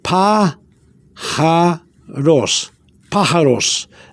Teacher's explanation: when you pronounce the P-A or the A sound, it's got to go up like a stress